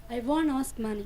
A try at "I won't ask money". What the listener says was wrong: You have to stress on money.